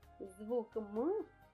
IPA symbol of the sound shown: м